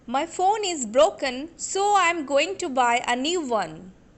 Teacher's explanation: in the second sentence I am putting stress on phone broken going buy new one